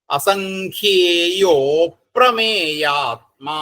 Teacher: പിന്നെ അപ്രമേയാത്മാ, അസംഖ്യേയോ അപ്രമേയാത്മാ കൂടി വരുന്ന സമയത്ത് അസംഖ്യേയോ എന്ന് കഴിഞ്ഞിട്ട് അകാരം, അപ്രമേയാത്മാ എന്നുള്ളതിന്റെ അകാരം അങ്ങോട്ട് ലോപിക്കും. അവിടെ ഒരു പ്രശ്ലേഷം വരും.